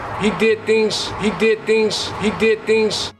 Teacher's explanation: voicing we use the voiceless equivalent which is an S so the Z Sounds at the end of words turn into more of an S sound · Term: devoicing